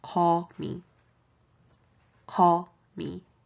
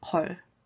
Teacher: Since it's a G sound, think of writing the English alphabet G, and this is the part that makes the G/K sound in Korean. I say G/K because it's not a solid G sound, but it's also not a solid K sound. It's more of an in-between sound, and you get there by making it a more of an airy G sound. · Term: Korean G/K